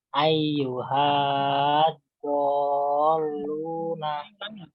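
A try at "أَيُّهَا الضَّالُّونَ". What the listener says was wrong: Ulangi. Hanya nggak panjang. Masuk ke do. Ayyuhad do.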